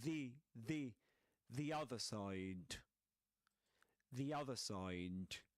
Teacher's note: The in this case is pronounced as the, just like at the end of the word happy, because it's followed by a word that starts with a vowel sound